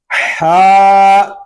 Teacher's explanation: ہا حلق کے درمیان والے حصے سے ادا ہوگا